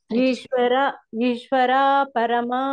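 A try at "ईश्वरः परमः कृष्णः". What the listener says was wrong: ನೀವು ಇಷ್ಟೇ ತಿಳ್ಕೊಳಿ ಅಲ್ಲಿ ಗ್ಯಾಪ್ ಬಿಡಬಾರದು ಅಷ್ಟೇ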